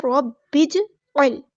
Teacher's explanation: बा हमको हमने जीम के साथ मिला देना है, हमज़तुल वस्ल हमारा ड्रॉप हो जाएगा और जीम साकिन पे कलकला होगा। अब इसको ध्यान से पढ़ना है, रब्बिजअल है ये वर्ड, आइन को गुस्सा है लेकिन थोड़ा सा अदा करेंगे, लाम साकिन को हिलाएंगे नहीं।